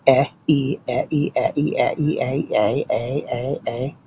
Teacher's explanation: A is a diphthong. That's not a true vowel. That's a combo vowel. It's actually followed by E. So e, e, e, e, e, e, a.